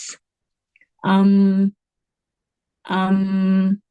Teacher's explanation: ہونٹ مل رہے ہیں تو یہی میم کا مخرج کہلائے گا